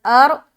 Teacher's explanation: را کو موٹا رکھنا ہے کیونکہ حمزہ کے اوپر زبر آ گیا